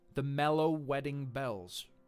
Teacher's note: the repetition of this e sound in the middle of the final three words in the quotation is an example of assonance it's a repeated vowel sound now assonance usually occurs within the